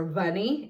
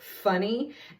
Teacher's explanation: the error is of voicing so they're saying you're a bunny instead of funny